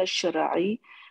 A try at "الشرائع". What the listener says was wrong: شرعی، اس کو لمبا کریے نا، الف ہے بیچ میں.